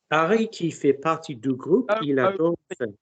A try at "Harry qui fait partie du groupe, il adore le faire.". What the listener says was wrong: Don't overspeak. Vowels correct, lovely vowels. Don't overspeak, guys. I don't want every time have to go soften the mouth. Harry qui fait partie du... Harry qui fait partie du groupe, il adore le faire.